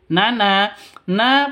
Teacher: panjang dua ketukan karena ada alif diawali dengan fathah atau alif ada alif sebelumnya berharakat fat fathah mad asli atau mad thai.